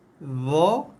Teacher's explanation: huruf dha adalah huruf yang paling tebal, paling gemuk, paling besar bunyi dia, meninggi bunyinya